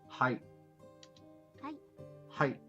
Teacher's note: The word hi is actually pronounced ha-e. But since Japanese is a language spoken at rapid pace, the syllables tend to merge.